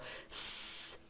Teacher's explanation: S, não vibra. As cordas vocais não vibram. · Se você colocar a mão na garganta, não tem vibração quando você fala o S, ó. S, não vibra. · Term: voiceless